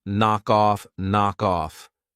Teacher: I'm going to pronounce the final K on knock, and I'm going to pronounce it on off, knock off, knock off.